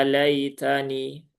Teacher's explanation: Ya-nya 2 harokat, ada fathah berdiri di sini, kemudian ada lai ya, ada huruf lin ya, yaitu ya sukun yang didahului harokat fathah. Maka ini dibaca dengan halus saja dengan lembut. Jadi ya laitani tidak perlu diberikan sentakan yang berlebihan.